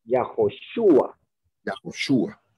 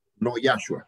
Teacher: la forma más fuerte de entonación es en la U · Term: el acento